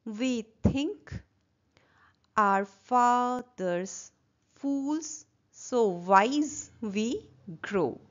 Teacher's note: Here it is unstressed, stressed, unstressed, stressed, unstressed, stressed, unstressed, stressed, unstressed, stressed. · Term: iambic pentameter